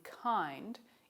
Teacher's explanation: the k in kind is aspirated, so we would write the symbol for it as k with a little h after it.